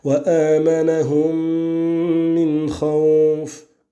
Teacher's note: Et on aura à nouveau l'assimilation du mime dans le mime qui vient juste après, donc al-idram al-shafawi pour ta parole wa amanahum min khawf avec l'assimilation du mime dans le mime qui vient juste après